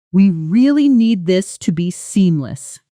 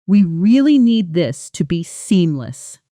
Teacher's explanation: stress on need emphasizes urgency while stress on seamless emphasizes the specific quality required